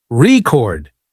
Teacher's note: For example, in the word record, if you stress the first syllable, RE chord, it's a noun, but if you stress the second syllable, record, it's a verb